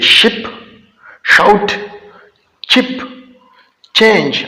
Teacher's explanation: हम अपना जो जुबान है उसका मिडल पार्ट उठाकर हार्ड पैलेट के साथ टच करते हैं इन साउंड को प्रोड्यूस करने के लिए · जो साउंड जुबान का जो मिडल पार्ट है और हार्ड पैलेट है, इनके मिलाप से बनते हैं, उनको पैलेटल्स कहा जाता है, पैलेटल साउंड कहते हैं।